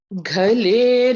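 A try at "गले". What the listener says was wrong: Gale. It is not ghale, it is gale. Ga is alpa prana.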